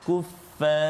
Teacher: Ra saja tebal, jangan ajak fa tu.